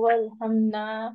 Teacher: یہ الف مدہ ہوا اور اس کو 2 سیکنڈز کے لیے کھینچ کے پڑھیں گے